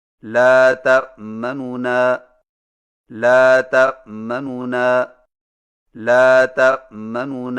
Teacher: دو نونوں سے پڑھیں لیکن پہلے نون کی پیش کو جلدی سے پڑھیں، یعنی اس طرح لا تأمنون، لا تأمنون، لا تأمنون. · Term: اختلاس